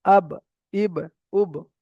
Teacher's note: দুই ঠোঁটের ভিজে অংশ মিলিত হয়ে বা উচ্চারিত হয়। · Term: বায়ের মাখরাজ